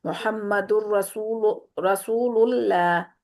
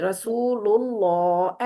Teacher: मुहम्मदुर रसूलुल्लाह, अल्लाह के दोनों लाम, 2 लाम पढ़े जा रहे हैं, तशदीद वाला हर्फ 2 दफा होता है ना, तो अल्लाह के लफ्ज में 2 लाम होते हैं, तो दोनों लाम पुर करने हैं, यानी शुरू से आखिर तक अल्लाह के लफ्ज को मोटा रखना है। आप पहला वाला लाम पूर कर रही हैं, अगला वाला लाम जो है ना आपका बारीक हो गया, जैसे आपने पढ़ा मोहम्मदुर रसूलुल्लाह, ऐसे कर दिया, इस तरह नहीं, रसूलुल्लाह, एंड तक मोटी आवाज रखें।